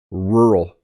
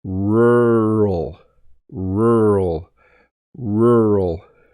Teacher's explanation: I almost don't say the two syllables